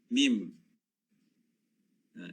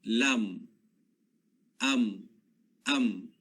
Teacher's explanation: huruf mim ya, makhrajnya adalah di bahagian 2 bibir.